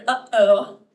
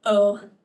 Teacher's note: you hear the catch actually at the beginning and in the middle uhoh you can feel it right that is the glottal stop